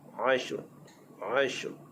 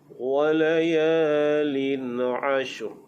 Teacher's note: Ashr bila waqaf, ra itu dibaca dengan tebal.